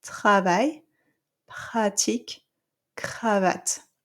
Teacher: So you still hear the R vibrating, but it's softer, okay? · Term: strong R